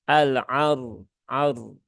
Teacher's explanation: Karena di situ ada huruf ro yang sukun. Ro punya sifat tawasud dan dia berhubungan dengan harokat fathah, maka ro-nya dibaca dengan tebal